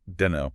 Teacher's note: Sounds nothing like I don't know. The T is gone. The K is gone.